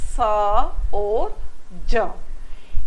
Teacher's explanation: इनमें संघर्ष होता है अब अगला है स और ज इसमें जीभ का जो आगे का भाग होता है और मसूड़े के बीच संघर्ष होता है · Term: संघर्षी व्यंजन